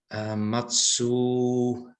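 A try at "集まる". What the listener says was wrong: Atsu, not matsu. Atsu.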